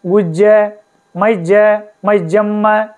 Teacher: ऐसा इसको यकार को जकार उच्चारण होगा